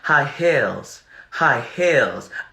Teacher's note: she's conforming her vowels to an I. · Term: conforming vowels